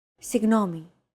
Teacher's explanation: it's like a very soft continuous and loosely held G almost as if you're gargling but don't make it sound too throaty